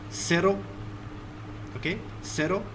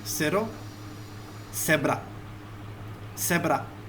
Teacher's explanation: Z is pronounced as S. It is similar to S sound in Spanish.